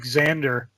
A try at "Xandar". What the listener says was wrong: No, Xander. Just Xandar. Xandar.